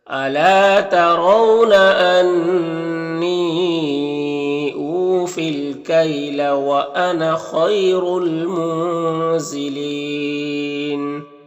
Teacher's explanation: گے، الف کو نہیں پڑھیں گے، نون میں اخفا ہوگا، اور یہاں پر وقف کی صورت میں مد عارض وقفی ہوگا